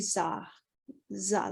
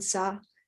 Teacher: the low tone sa also it can sometimes be modified to more like za